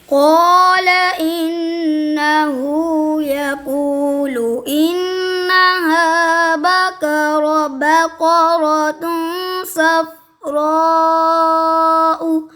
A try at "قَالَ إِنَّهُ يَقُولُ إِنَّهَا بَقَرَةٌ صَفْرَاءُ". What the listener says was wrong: نہیں وقف ایسے نہیں کرنا تھا. صفراء ایسے. وقف کی نشانی لا ہے, اس کو آگے پڑھنا چاہیے یا پیچھے سے؟ پیچھے سے. جی بقرۃن سے یا انہا سے پڑھ لو, یا صفراء سے بھی پڑھ سکتے ہیں.